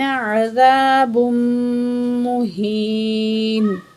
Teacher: 2 پیش کو میم تشدید کے ساتھ ملا کے پڑھیں گے، اور غنہ کریں گے